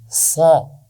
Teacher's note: یہ موٹی آواز ہے اور اس میں سیٹی بھی ہوتی ہے